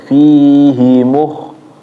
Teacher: Fi-nya panjang. Fi-nya panjang. Hi-nya pendek.